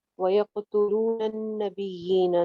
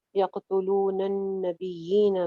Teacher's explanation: नून छत पे गुन्ना हो जाएगा